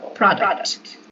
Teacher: So you make emphasis on the first syllable. The stress goes on the first syllable.